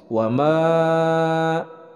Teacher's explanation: yang ke-5 di sini ada Mad tanda mad dan ini adalah hukum bacaannya Mad Jaiz munfasil wama dibacanya panjang 4 harokat